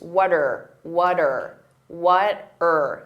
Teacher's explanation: What are can combine together and that R can sound very reduced.